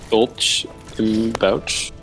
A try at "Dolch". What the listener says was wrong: Pronounced it wrong. You don't use the sh. You use the like it's a sort of an H sound because